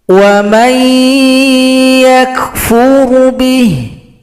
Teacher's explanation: Jadi didengungkan. Wa may, bunyi nun dibawakan ke huruf ya. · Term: idgham bi gunna